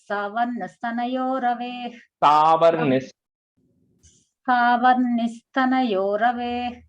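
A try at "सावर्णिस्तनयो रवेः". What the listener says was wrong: Ravehe is a visarga at the end there. Ravehe.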